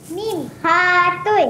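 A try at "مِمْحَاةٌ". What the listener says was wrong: Mim hatun. Mim hatun. Mim hatun, la yuja alif. Dekat sini tak ada alif kan? Tapi dia ada alif. Jadi dia kena harakah tawilah bacaan panjang.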